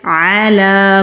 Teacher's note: خیال کرنا ہے کہ حمزہ کی آواز نہیں آئے، عین کی آواز نکالیں گے